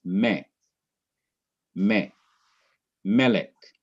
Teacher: syllable would be accented but it is not accented in melik the syllable that is accented in melik is not the last syllable but it is the syllable immediately before the last syllable